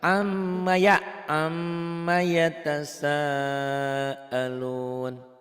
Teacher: ditahan M-nya, ma-nya dilepas